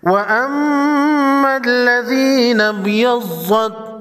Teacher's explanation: با ساکن کو ہلا کر پڑھیں گے